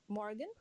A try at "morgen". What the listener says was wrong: morgen. Morgen नहीं morgen. R को pronounce नहीं किया जाएगा. Okay, morgen.